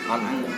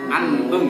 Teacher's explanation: Didengungkan saja. Dia bacaan ikhfa ma'al hunna. Ikhfa disertai dengan hunna.